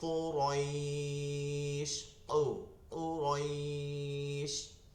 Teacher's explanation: কফের ক্ষেত্রে জিহ্বার গোড়া তার বরাবর তালু, ভিতরের দিকে গোড়া তার বরাবর তালুতে লাগবে।